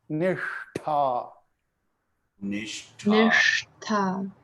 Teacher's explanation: the S here is the S which comes from the roof of your mouth.